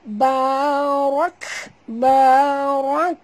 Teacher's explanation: huruf ra kena baca tebal dan mati pada kaf, jadi bunyikan hamas pada kaf